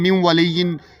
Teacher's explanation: آپ اس کو دیکھیں، من ولیین، یہ نون کی آواز ختم. ٹھیک ہے، واو جو ہے وہ حروف یرملون میں سے ہے، اس لیے نون ساکن کی آواز ختم. من ولیین، اس نون کا ادغام کر دیا واو میں.